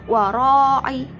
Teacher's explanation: bacaan mat wajib mutasil sebab mat tabi'i bertemu hamzah dalam satu kalimat panjangnya 2,5 alif atau 5 harokat